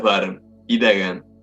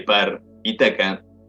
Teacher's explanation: Las tres consonantes que aparecen en las palabras bar y daga son sonoras, mientras que las correspondientes consonantes de par y taca son sordas.